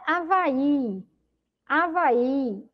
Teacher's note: Observe que quando pronuncio Avaí a sílaba mais forte é justamente vai